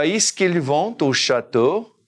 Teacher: carry that T over and we say it fluidly